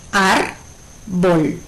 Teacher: Como el acento recae sobre la sílaba ar, es una palabra grave. · Palabras graves. Su acento recae en la penúltima sílaba.